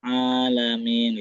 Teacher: enggak terlalu panjang ainnya dan dia enggak ada tasdidnya ya ada mad di ain